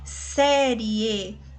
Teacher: Aqui nós temos um ditongo oral e ele é crescente, tá bom? Nós temos aqui primeiro a semivogal, depois a vogal.